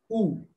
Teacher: Then there is the back closed vowel, U.